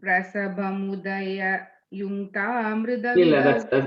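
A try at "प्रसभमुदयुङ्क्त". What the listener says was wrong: That's a mistake. You're saying Udaya Yunkta, you're saying. You're putting a double ya there. So Prasabham Uda Yunkta. I think you're saying Prasabham Udaya Yunkta. You're putting an extra ya.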